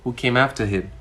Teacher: at the end of my sentence, I used the falling tone